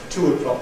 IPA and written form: ˈtʊəˈklɒk (two o'clock)